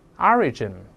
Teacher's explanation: 注意重音在前面，慢慢来